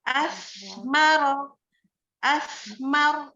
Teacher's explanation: Jadi pastikan membacanya itu lidahnya keluar memang, tapi memang nggak panjang-panjang banget.